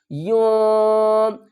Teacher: اخفا کریں گے، یون. آواز کو ہم ناک سے خارج کریں گے، ناک کے جو مانسے ہیں ان سے خارج کریں گے، اظہار بھی نہیں کریں گے اور غنہ بھی نہیں کریں گے.